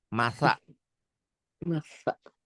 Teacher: Masalu sa ujung lidah ke ujung gigi. Masaluhum sa, bukan sin, bukan shin.